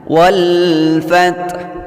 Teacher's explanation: ada alif lam qamariyah, dibaca dengan terang bunyi alnya.